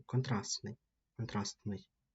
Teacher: Тобто у нас тут навіть не буде звуку. Ми пишемо т, але звуку немає. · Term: спрощення